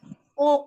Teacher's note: Pangkal lidah yang paling atas menyentuh langit-langit yang lunak